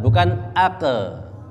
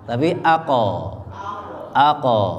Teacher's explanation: Qaf itu sifatnya tebal, maka ketika disukun dia tetap tebal.